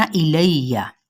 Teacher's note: ثم میم پہ غنہ کرنا ہے اور حرکت کو لمبا نہیں کرنا۔ الیہ، لام کی زبر کو یا کے ساتھ ملائیں گے، یا کی زبر کو بڑھائیں گے نہیں